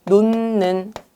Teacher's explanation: 그래서 결과적으로 니은 앞에서 히읗이 니은으로 발음이 되는 거예요. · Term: 비음화